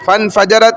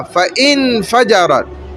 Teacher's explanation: اب اس میں فا کے ساتھ جو الف ہے وہ دیکھیں وصلی ہے، جوڑنے والا، تو فا اور نون جڑنا ہے اور وہ الف سائلنٹ ہو رہا ہے، چھپ رہا ہے۔